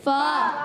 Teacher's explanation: اوپر والی دانتوں کے کنارے نچلے ہونٹ کے تر حصے سے جب لگتے ہیں تو ادا ہوتا ہے فا